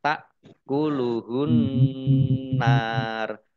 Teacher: Alif lam koma alif lam samsiyah karena tidak dibaca langsung masuk ke huruf berikutnya yaitu nun ditandai nunnya ada tasdidnya. Nun tasdid dibaca gunnah atau mendengung ditahan 2 harokat.